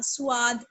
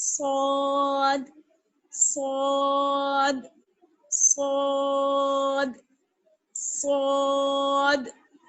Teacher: سین کی طرح ہمیں نہیں پڑھنا ہے، سین کی آواز باریک ہوتی ہے اور صاد کی آواز موٹی ہوتی ہے. صاد کو ادا کرتے وقت واو کی آواز بالکل نہیں آنی چاہیے، ہونٹوں کو گول نہیں کرنا ہے